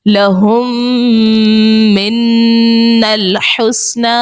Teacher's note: میم کے بعد دوسری میم ہے تو وہاں پر ادغام شفوی ہوگا، وہاں پر غنہ کریں گے